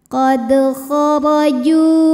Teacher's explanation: Huruf ra dibunyikan secara tafkhim karena berharokat fathah, maka ra-nya tebal.